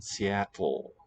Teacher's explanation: that sequence of sounds just from t straight into l i would make it a breathy one there are languages on